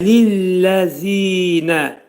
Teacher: Zə pərtək hərfdir. Dil 2 dişin arasına girərək pərtək zə hərfinin məxrəcini çıxarırıq.